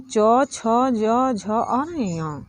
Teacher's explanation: यह तालु के स्पर्श से इसकी आवाज़ निकलती है। जैसे इसका उदाहरण तालु के स्पर्श से होता है, यानी कि जब हम लोग च बोलते हैं तो हम लोग की जो जीभ है वह तालु से सटती है च से लेके य तक बोलने में। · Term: च वर्ग